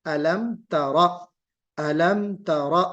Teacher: حرف ابدال الحرف بالحرف کا جو غلط طریقہ ہے، جو مخرج بدل جانے والا، وہ بھی گویا کہ اس میں واقع ہو جائے گا، تو تورا نہیں ہوگا بلکہ علم ترا، علم ترا، را کو پر اور تا کو باریک